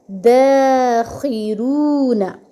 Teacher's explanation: اب خی میں، خو میں خراش ہے، رگڑ ہے، رون، را بھاری ہے کیونکہ اس پہ پیش ہے۔